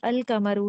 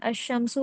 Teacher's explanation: इसमें कई बार अलिफ लाम में लाम कुछ हरूफ में पढ़ा जाता है और कुछ में नहीं पढ़ा जाता। जैसे अल कमरू है, इसमें लाम पढ़ा जा रहा है, लेकिन अशमसु में बताएं लाम पढ़ा जा रहा है? नहीं।